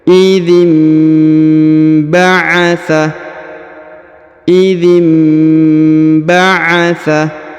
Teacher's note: nun sukun bertemu ba maka nunnya menjadi mim ya nunnya berubah menjadi mim ditahan dan didengungkan dua harakat